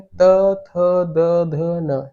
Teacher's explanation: वैसे यदि आपको त, थ, द, ध, न बोलना है, आप बिना दांत में अपनी जीभ टकराए नहीं बोल पाएंगे